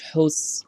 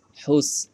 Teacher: এই সদের ক্ষেত্রে সাউন্ডটা মোটা হবে, আর সিনের ক্ষেত্রে সাউন্ডটা চিকন হবে।